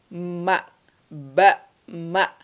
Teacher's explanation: Jadi ba itu bertemunya antara dua bibir ya.